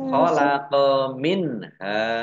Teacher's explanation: nun sukun bertemu dengan huruf ha, bacaan idhar, dibaca jelas. Minha, fathah alif mat tobi'i, panjang 2 harokat.